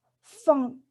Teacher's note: As for the last one, n, as in funk, the oral passage is blocked by pressing the back of the tongue against the soft palate